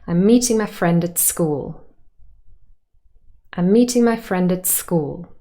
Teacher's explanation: So I'm meeting my friend at school means school is slightly more stressed than meeting and friend. And I'm, mine, at are unstressed. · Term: tonic stress